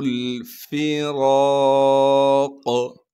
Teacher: فا کو بغیر کھینچے پڑھنا ہے، را پر زبر ہونے کی وجہ سے را کو موٹا کر کے پڑھیں گے، را کے بعد الف مدہ ہونے کی وجہ سے را کو ایک الف کے مقدار کھینچیں گے، قاف کو وقف کی حالت میں ساکن کر کے قاف پر قلقلہ کیا جائے گا۔